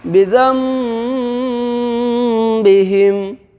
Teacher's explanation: یعنی ایک الف کے برابر کھینچ کر کے ناک کے بانسا کے اندر میں آواز چھپا کر کے ادا کریں گے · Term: غنہ